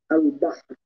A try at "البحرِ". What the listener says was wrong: لا تقول البحر. لا تقف على السكون، نحن الآن نأتي بالراء المكسورة.